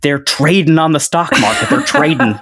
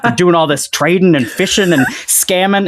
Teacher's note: He dropped the G on all ING words.